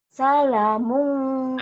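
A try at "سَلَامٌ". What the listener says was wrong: Nah, kan panjang. Salamun. Salamun. Ikhfa ya. Salamun. Banyak orang yang baca salamun. Ini kan ikhfa. Salamun. Ya, salamun. Salamun. Atau bisa juga gini. Salam.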